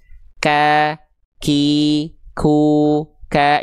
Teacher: Tapi untuk huruf kaf ini pengkhususan dia hanya berupa terpercik nafas atau percikan nafas saja. Hanya berupa percikan-percikan nafas saja.